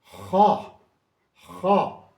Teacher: تو اس کو آپ پورے منہ، بھرپور منہ کے ساتھ موٹے، خا، خا یعنی حلق سے نکلے گا لیکن پورا منہ بھر کے